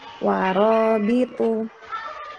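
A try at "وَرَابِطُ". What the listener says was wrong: Panjang. Warobitu.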